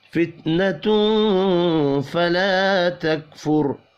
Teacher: تنوین کے بعد فا ہے، اخفاء حقیقی ہوگا، الف مدہ کو ایک الف کے برابر کھینچ کر پڑھیں گے، را ساکن ہے اور پچھلا حرف پیش ہے، اس لیے را کو پر پڑھیں گے پیش کی وجہ سے۔